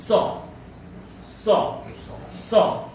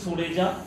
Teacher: দন্তস্ব, তালব্যস্ব এবং পেট কাটা মূর্ধন্য-ষ। দন্তস্ব, যে স উচ্চারণ করতে গেলে জিভটা দাঁতে লাগে তখন তাকে বলা হয় দন্তস্ব